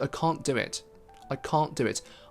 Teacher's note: I didn't even try to pronounce that T. That's why you can't hear it. But in the case of unreleased stop, we still preserve a part of that plosive sound.